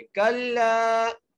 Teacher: सुम्मा कल्ला, काफ को जब लाम से मिलाएंगे और फिर लाम को एक अलिफ की मिक़दार खींच के पढ़ेंगे